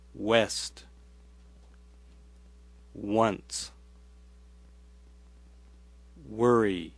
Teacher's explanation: Use your voice as your breath passes through the teeth and lower lip. To make the W sound, push the lips forward and say oo. Then let the tongue and lower lip drop and say ah. When you let the first sound glide into the second, W is produced.